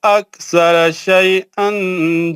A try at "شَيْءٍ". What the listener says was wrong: دیکھ کے پڑھو نا یار دو زبر نہیں ہے نا دو زیر ہے نا